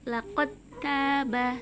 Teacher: karena bertemu dengan huruf ta yang sama makhrajnya dengan huruf dal, maka langsung dimasukkan ke huruf ta-nya